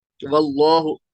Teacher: जो लफ्ज अल्लाह का ये वाला लाम है जो ग्रीन ये दिखा हुआ है, इस लाम से पहले अगर जबर या पेश हो हरफ पर, तो इस लाम को हम पुर पढ़ेंगे।